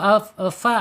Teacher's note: ujung gigi seri atas menyentuh perut bibir bagian bawah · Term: asyafatain